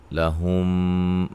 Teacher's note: لہم میم ساکن کا ادغام، اس کو ادغام شفوی کہتے ہیں